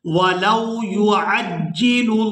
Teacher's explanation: पहले लाम को बारीक अदा करेंगे और जो लफ्ज़ अल्लाह का लाम है इसको हमने पूरा अदा करना है।